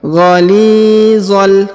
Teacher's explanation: Huruf li dibaca panjang 2 harokat karena di depannya terdapat ya sukun. Ghalizal. Kemudian huruf za langsung sambung masuk ke huruf lam yang berharokat sukun.